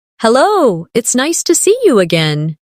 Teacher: see you often sounds like see ya in fast speech.